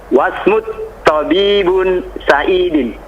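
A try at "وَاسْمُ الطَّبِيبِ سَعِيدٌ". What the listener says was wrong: Wasmut tabibi. Dikasih harokat. Wasmut tabibi dikasrah Sa'idun. Bukan Sa'idin.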